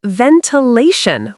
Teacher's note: Say ventilation with stress on law.